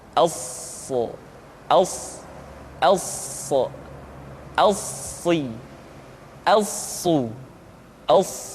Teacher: Untuk memudahkan pengucapan huruf sa, Perhatikan sifat as-safir yang dimiliki oleh huruf sha, yaitu suara tambahan yang terdengar menyerupai dengan suara angsa